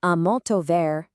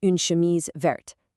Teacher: Vert has a silent t at the end, but in the feminine verte, that added e forces you to pronounce the t.